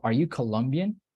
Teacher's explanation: it's not a plain intonation but it rises in the end · the intonation Rises a little bit at the end